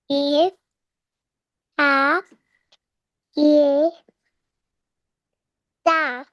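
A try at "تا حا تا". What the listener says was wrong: ता हा ता, ये कहा आपने।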